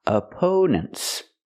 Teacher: The stress is on the second syllable. We use a long O sound like no and go for the second syllable. Opponents. And the last syllable is relaxed.